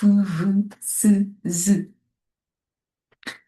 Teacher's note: Elles peuvent être occlusives, c'est-à-dire qu'ils se prononcent avec fermeture totale puis ouverture brusque de la bouche, produisant un bruit d'explosion, par exemple pu, bu, tu, de, ou constrictives, donc qui se prononcent avec un resserrement qui produit un bruit de friction, par exemple fu, vu, se, z.